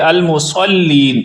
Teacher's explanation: المصلین کے صاد کو پر پڑھیں گے، سین نہیں بنائیں گے، المصلین نہیں کریں گے بلکہ المصلین، صاد کو پر یعنی موٹی حالت میں پڑھیں گے اور آخر پہ لمبا کریں گے۔